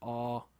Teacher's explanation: Something like aw is a low back vowel.